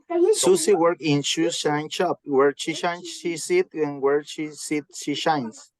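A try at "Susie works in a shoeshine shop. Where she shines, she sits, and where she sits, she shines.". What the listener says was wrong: Nice, nice, nice. Very good, very good, very good.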